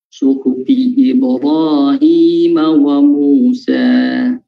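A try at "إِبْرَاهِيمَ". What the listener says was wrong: I-nya juga di huruf hamzah ya, Ibrahim. I itu di bibirnya ditarik ke belakang sedikit, I biar kedengaran tipis. Suhufi Ibra, bukan Ibra. Kalau dia kedengaran tebal, tapi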